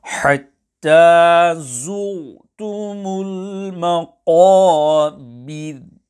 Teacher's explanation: Ra Sakina on the word zu'tum will be pronounced full mouth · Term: empty mouth